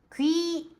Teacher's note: 口を前にぐっと突き出して、この状態からいいと音を出していきます。 귀、찬、激音なので意識して息を出して発音します。귀짠ではなく귀찬、찬。귀찮을▁때도▁있는데,▁でも그래도▁보통、통、ここも息出して통です。보통▁집에서▁먹어요.▁家で食べます。시간이▁있으면、時間があったら、時間があるときは새로운▁요리、新しい料理です。새로운、パッチムの次、よが来て、N、ニウンが転化されて